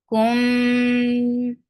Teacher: This is idgham shafawi, and it will get unna, which will be long. Kum, and then it is 2 sounds long.